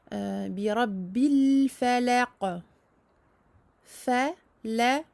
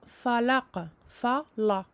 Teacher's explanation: Ici, c'est aminci, à part le qaf à la fin qui est emphatique. Donc attention à bien amincir le fa et le lem.